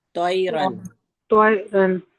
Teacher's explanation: بہت زیادہ گول تو منہ نہیں کر کے بولیں گے، بس ہلکا سا اس کو آ کا ساؤنڈ دیں گے